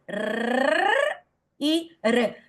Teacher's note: Y entonces en castellano, les decía, tenemos las dos vibrantes alveolares, cuando la el ápice de la lengua se apoya en los alvéolos y vibra